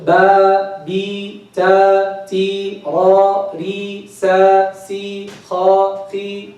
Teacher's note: With the fatha, the lower jaw is going down more, right? With the kasra, less.